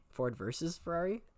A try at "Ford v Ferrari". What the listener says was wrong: Ford v. Ferrari. not... Well, and the thing, it's just Ford v, not VS.